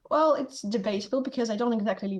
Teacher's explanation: her tees are replaced by glottal stops or they just or they just Disappear Completely